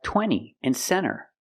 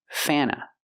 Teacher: when you have NT between vowels, you don't really hear the T.